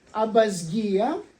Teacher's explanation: Я сейчас об этом всем не буду говорить, только замечу, что наиболее точная форма абазгия, где учитывается передача виты как б и озвончение сигмы перед звонким гаммой греческой